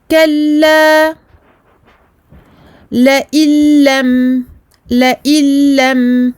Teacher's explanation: À ce moment-là, on aura donc affaire à un idgham, en français l'assimilation. Idgham avec un lam, il n'y a pas de runna. Donc on va tout simplement passer de la hamza, ici maksoura, au lam, ici mushaddada.